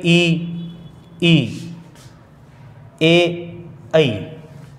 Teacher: ये 4 स्वर ऐसे हैं जिनका उच्चारण करेंगे तो जिह्वा का आगे वाला भाग यानी नोक वाला भाग ही कंपित होगा, वही ऊपर उठेगा।